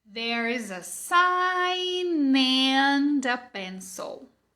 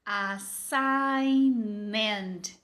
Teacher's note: Quando você junta sign com and, você marca esse N, fica óbvio, você conecta uma palavra na outra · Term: connected speech